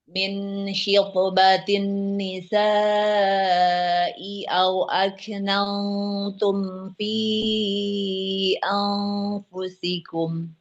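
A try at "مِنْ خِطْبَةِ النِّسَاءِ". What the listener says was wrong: Nah, huruf hamzahnya jangan panjang ya. Min khitobatin nisa'i. Jangan min khitobatin nisa'i au aknantum. Agak panjang jadi.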